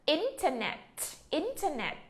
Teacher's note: từ internet thì chúng ta sẽ nhấn ở chỗ chữ in.